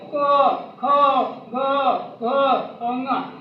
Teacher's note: क ख ग घ अंगा, इसका उच्चारण स्थान कहाँ से होगा? कंठ से होगा।